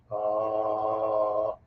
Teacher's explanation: the sound here the bass guttural sound is this low ah sound